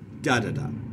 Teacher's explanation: The dactylic foot is stressed, unstressed, unstressed, da-da-da.